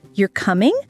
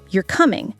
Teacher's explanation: when the voice goes up at the end, it's usually a question like you're coming. But when it goes down, it's a statement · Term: intonation